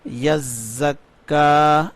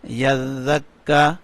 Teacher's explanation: یا زا زبر یز، زا کاف زبر زک، یزک، کاف کھڑی زبر کا، یزکا۔ یہ زا میں خوب سختی کریں گے، یعنی اس میں سیٹی کی آواز آئے گی۔ اس زا کو ہمیشہ سختی سے پڑھا جاتا ہے، یعنی اس میں سیٹی کی آواز آتی ہے۔